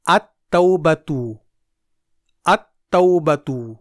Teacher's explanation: ال کے لام کو پڑھنے کے بجائے حروف شمسی کو 2 بار پڑھا جائے گا، جیسے التوبۃ میں ال کے بعد تا حرف شمسی ہے، اسی لیے یہاں ال کے لام کو نہیں پڑھا جائے گا بلکہ اس کے بدلے تا کو ڈبل پڑھا جائے گا۔ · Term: ادغام